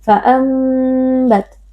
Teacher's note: Iqlab karena ada nun sukun yang bertemu dengan huruf ba. Nun sukun diganti dengan mim sukun lalu dibaca dengan berdengung.